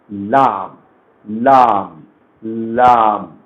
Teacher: لام ادا ہوگا زبان کی نوک اوپر کے دانتوں کے مسوڑوں سے، اور اس سے ذرا نیچے کی طرف ہٹ کر.